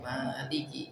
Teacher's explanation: maliki berarti kan ma-nya panjang